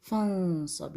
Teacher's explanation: یہاں نون کا آپ نے موٹا سا غنہ کرنا ہے کیونکہ صاد موٹا لیٹر ہے